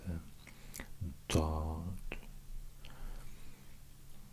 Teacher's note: like an S and a D but with constricted throat, or pharyngealized